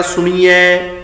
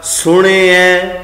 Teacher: ਨਾਣੇ ਨੂੰ ਲੱਗੀ ਹੋਈ ਸਿਹਾਰੀ ਦਾ ਉਚਾਰਨ ਕੀਤਾ ਜਾਣਾ ਹੈ, ਪਰ ਹਲਕਾ ਜਿਹਾ। ਸਿਹਾਰੀ ਦੀ ਬਿਹਾਰੀ ਨਹੀਂ ਬਣਾਉਣੀ, ਸਿਹਾਰੀ ਨੂੰ ਬਿਹਾਰੀ ਵਿੱਚ ਬਦਲ ਕੇ ਉਚਾਰਨ ਨਹੀਂ ਕਰਨਾ।